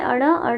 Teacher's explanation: अड़ का उच्चारण स्थान मूर्धा प्लस नासिका होता है